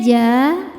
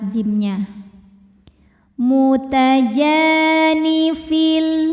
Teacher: Berikutnya ja hukumnya adalah mad thobi'i zohiri. Sebab ada alif yang didahului baris fathah maka dibacanya panjang dua harakat.